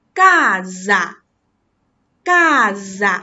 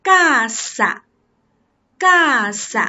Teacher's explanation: 当一个▁s▁加在两个元音中间时，我们发浊音▁gaza。▁但是呢如果它双写成两个▁s，▁即便它也是加在两个元音中间的，那么我们也要发清音